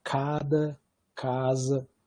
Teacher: Então você vai ter a plosiva velar desvozeada, como em cada, casa, etc.